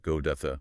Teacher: The individual T sound disappears into the flow of the link speech. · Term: flap t